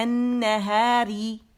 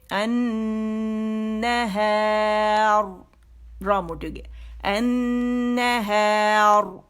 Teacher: کیسے ہوگی، کیونکہ ہم نے ساکن کر دیا اور الف مدہ پہ وہ ہم اسے سٹاپ کر رہے ہیں، ٹھیک ہے، ساکن پہ. یعنی را ساکن سے پہلے اگر الف مدہ آ جائے اور وقف کرنا ہو تو پھر را موٹی ہو جائے گی